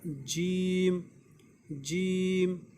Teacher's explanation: ज़बान का बीच वाला हिस्सा, और उसी बीच वाले हिस्से के ऊपर का जो मुंह है, मुंह का जो हिस्सा है, वहाँ पे ज़बान जो टच हो जाएगी। आप बोलिए, वो आपको पता चलेगा, वहाँ से जीम निकलेगा, जीम जीम।